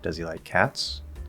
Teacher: know it's either going to be this one or this one in a yes or no question i don't know if the answer is yes or no and so i'm going up on cats